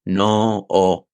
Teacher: una palabra que solo tiene una sílaba, que es no, la estamos alargando